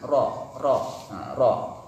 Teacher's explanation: Ujung lidah mengarah dekat punggungnya. Kemudian dipertemukan dengan langit-langit bagian depan sesudah makhraj nun. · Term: huruf ro